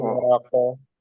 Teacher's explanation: Jadi langsung dilepas. Ini namanya qalqalah kubro karena di akhir.